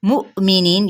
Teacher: मुमिनीन, यहाँ पे हमने हमज़ा साकना यहाँ पे झटका देंगे